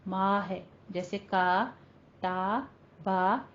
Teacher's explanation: جس کو 4 حرکتوں برابر لمبا کر کے پڑھنا ہے، اور ما کی آواز جو ہے ناک میں نہیں جانی چاہیے